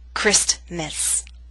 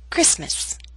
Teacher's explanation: Christmas is one of those words in English that is written with a t but we don't pronounce it